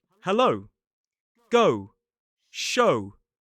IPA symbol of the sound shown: əʊ